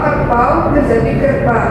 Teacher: Salah satu unsur diptong tidak diucapkan.